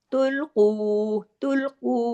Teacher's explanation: अब देखिए कौफ हैवी आ गया, इसको हैवी करना है, दो हरकत खींचना भी है वाव मद्दा की वजह से